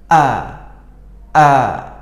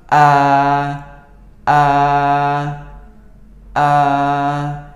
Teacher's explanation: awalnya kita menutup pita suara kita sehingga tidak ada suara dan udara yang keluar. A. Lalu kita buka sedikit sehingga udara itu menggetarkan pita suara. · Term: huruf hamzah